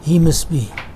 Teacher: He must be. T is elided. There is an elision of T.